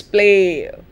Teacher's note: again say it again play it's not play but it's play a very very slight movement from the sound a towards the sound e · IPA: ei